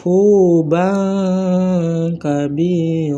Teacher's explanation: Maka cara bacanya dengan cara ee terdengar samar-samar antara izar dan ilgam lagi pula terus tersambung dengan makhraj huruf berikutnya sehingga kedengarannya seperti berbunyi ng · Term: ikhfa, hukum ikhfa